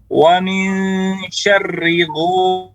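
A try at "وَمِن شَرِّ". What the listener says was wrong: syarrigo ini terlalu banyak getarannya. Getarannya terlalu banyak. Jadi dalam baitnya dikatakan wa akhfi takriran idza tushaddadu, dan sedikitkan getar ketika ditasydidkan. Jangan syarrigo, tapi cukup hanya satu dengan menyongketkan lidah syarri, dan juga ditipiskan syarrigo.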